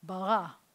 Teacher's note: with the accents on the second syllable and I know that because I've got this little scoopy thing